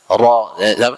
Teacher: Itu sifat ro tadi yang paling khas, yaitu sifatnya itu takrir. Satu kali getaran halus di ujung lidah.